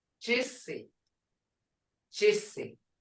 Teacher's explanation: Muskogee G is unaspirated. Sounding to English speaker, it is halfway between chi, as in chair, or J, jaw.